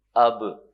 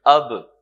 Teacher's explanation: اب تک تو آپ نے یہ کام کیا نہیں، تو یہاں پہ ہم اب نہیں کہیں گے، یہاں پہ ہم کہیں گے اب. با پہ آواز تھوڑی سی باؤنس بیک کرے گی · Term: قلقلہ